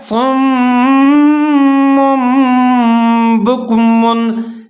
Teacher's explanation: تنوین کی آواز کو میم کی آواز کے ساتھ کیسے تبدیل کیا جاتا ہے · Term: اقلاب